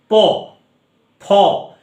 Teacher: দেখবে ওপরের ঠোঁট নিচের ঠোঁট দুজনকে স্পর্শ করছে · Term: ওষ্ঠধ্বনি